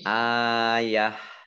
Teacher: Alif fathah berdiri mat tabi'i. Kemudian tak marbutoh karena wakof dibaca sukun menjadi hak